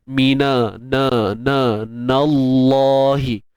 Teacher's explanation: Kalimah Allah kita baca dengan taghliz, tebal, kerana sebelumnya baris atas.